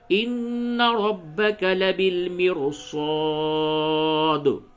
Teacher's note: اگر زیر ہو پھر بھی حروف مستعلیہ کی وجہ سے را کو پڑ کیا جا رہا ہے · یہاں پہ اس را کے قبل زیر ہے، پھر بھی اس را کو پڑ پڑھیں گے